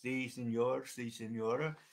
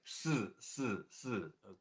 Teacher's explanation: It's more like a hissing, more breathy kind of sound, like si, si, si. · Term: breathy si